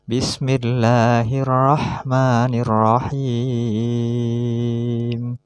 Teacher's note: rnya berharakat fathah maka harus dibaca tebal